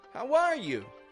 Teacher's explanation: the first person that says, how are you, typically raises the tone of voice on R.